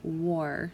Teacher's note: here the W a our that acts as the sound war so it almost makes the AR sound like Oh R